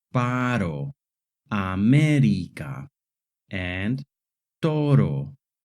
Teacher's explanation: the short tap R sound like in the words parro America and toro.